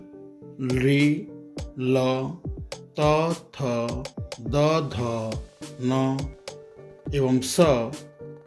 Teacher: रि, ल, त, थ, द, ध, न एवं स दंत की सहायता से बोले जाते हैं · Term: दंत स्थानीय वर्ण